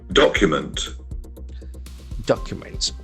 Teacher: We can see that the accent falls on the first syllable.